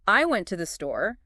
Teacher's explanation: If you emphasize I, it becomes I went to the store, implying someone else didn't.